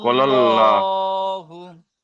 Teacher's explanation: লাম খাড়া এখানে জবর। আল্লাহ শব্দের লাম মুসাদ্দাদের আগে জাবার এসেছে, জাবার এসেছে। তাই আল্লাহ শব্দের লামকে পুর অর্থাৎ ল পড়তে হয়।